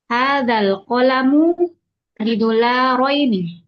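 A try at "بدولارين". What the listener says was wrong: Nah, du panjang.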